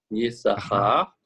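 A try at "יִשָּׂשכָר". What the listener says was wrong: Le deuxième signe ne se prononce pas. On dit Issachar, effectivement.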